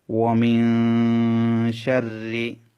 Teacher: নুন সাকিনের পরে শিন, সেজন্য নুনটা গুণনা করতে হবে। এই যে শিন হচ্ছে ইখফার হরফ।